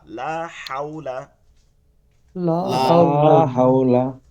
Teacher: মানে হাওলা গলার মধ্যে দিয়ে হা, লম্বা হা